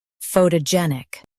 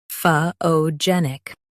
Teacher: US says foe. UK says fah. Stress jen.